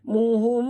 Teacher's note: Muhum, mim mati bertemu ba, mim yang mati ataupun sukun bertemu dengan ba. Ikhfa syafawi, tutup mulut, dengung 2 harakat.